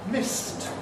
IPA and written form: mɪst (missed)